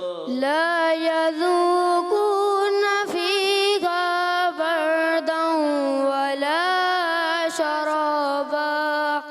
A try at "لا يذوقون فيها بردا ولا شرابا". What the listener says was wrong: غنہ غنہ چھوڑ دیا آپ نے. بردوں ایک الف، ٹھیک ہے؟ لا يذوقون فيها بردا ولا شرابا. اپنے سانس سینے میں بھرا نہیں، اس وجہ سے آپ کا پہنچ نہیں گا. آپ پہلے سینے میں سانس کو بھریں.